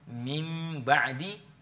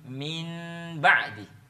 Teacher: nun sukun di situ bisa berubah suaranya menjadi mim